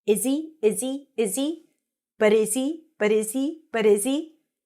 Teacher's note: but is he but is he look at those reductions and the H is not pronounced when it's connected